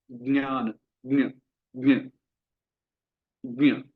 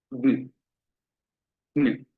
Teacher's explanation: ये ध्वनि जो है ये भी नेजल है, अनुनासिक है, नाक की सहायता से उच्चारण किया जाता है।